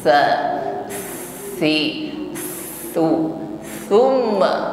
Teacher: Makhraj huruf sa adalah ujung lidah bertemu ujung gigi sari atas ya, ujung lidahnya sedikit nampak ya, atau sedikit keluar dari batas gigi. Sifat yang menyertainya adalah hamas, jarayanun nafasi. Ketika mengucapkannya diiringi dengan nafas yang mengalir.